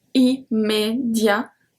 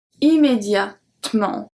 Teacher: We don't pronounce the E. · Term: the middle E that we skip